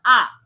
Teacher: আর জিহ্বা যখন সবার নিচে অবস্থান করে, তখন তাকে বলা হয় নিম্ন স্বরধ্বনি, যেমন আ। এই আ ধ্বনিটা মনে রাখাটা বেশ সহজ, কারণ আ ধ্বনিটা সব জায়গাতেই বেশ সেপারেটলি বসে, মানে আ ধ্বনির সাথে আর কারোর কিছু গন্ডগোল নেই।